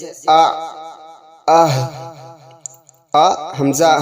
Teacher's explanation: حلق کے سینے کی طرف والے حصے سے ادا ہوتا ہے